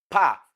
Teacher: Pa is a voiceless bilabial plosive.